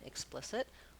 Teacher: the letters EX can say the ick sound, like in explicit, with the voiceless K and the lax I sound.